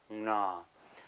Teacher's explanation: long and low and nasal